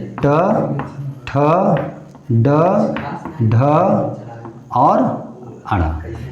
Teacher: ऐसे व्यंजन जिनके उच्चारण करते समय जिह्वा पहले पीछे की ओर मुड़े और फिर झटके से आगे की ओर फेंके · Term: मूर्धन्य व्यंजन